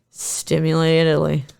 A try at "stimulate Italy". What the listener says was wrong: No, but you said something that was like stimulately. Oh, yeah, it just sounded like stimulately. You put them into a portmanteau.